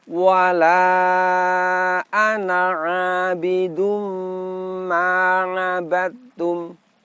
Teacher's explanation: Kemudian setelahnya pada lafadz ana, jangan lupa lafadz ana di sini dibaca pendek. Apa sebab? Pada huruf alifnya di atasnya terdapat tanda sifir mustatil yang menandakan bahwa dalam keadaan wasol alifnya bukanlah alif mad sehingga ana di sini dibaca pendek.